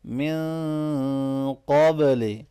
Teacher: من نون ساکن پہ اخفا ہوگا، قاف کو موٹا پڑھیں گے، با ساکن پہ قلقلہ ہوگا